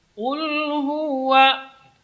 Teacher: Sini huwa, sini wawnya tidak boleh dibaca tebal, karena waw huruf tarqiq. Waw keluar dari dua bibir. Ya, posisi kedua bibirnya idmam, yaitu menunjuk ke depan.